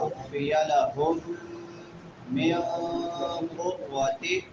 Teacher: میم ساکن ہے بعد میں حروف یرملون میں سے میم آ گئی ہے تو ادغام مع الغنہ ہوگا